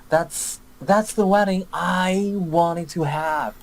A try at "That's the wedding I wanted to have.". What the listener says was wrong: I do like the intonation and the stress here.